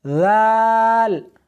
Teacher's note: اس حرف کو سا کی طرح نرمی کے ساتھ ادا کرنا ہے۔ ذال زال نہیں، سختی نہیں کرنی بلکہ نرمی کے ساتھ پڑھنا ہے